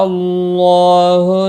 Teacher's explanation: اللہ کا لام زبر کی وجہ سے پر پڑھا جائے گا، اس کے اوپر کھڑی زبر بھی ہے، ایک الف کے برابر کھینچ کر پڑھیں گے۔